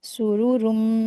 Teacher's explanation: तनवीन के बाद मीम आया है, तो गुन्ना करके पढ़ेंगे इसको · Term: इदगाम